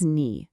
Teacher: The mistake I often hear is students using the rising second tone, so it sounds like they're asking a question, ni. We don't want that.